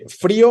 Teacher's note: Ya no es la O la que suena fuerte, ahora es la I la que es la tónica, la cerrada. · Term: hiato